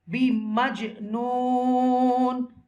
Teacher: You will read this jim with echo sound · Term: qalqala letter